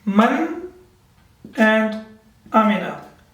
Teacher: There will be no nasal sound and we will not prolong it for more than a second. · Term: izhar